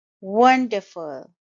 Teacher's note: it's a three syllable word and the stress is on the first syllable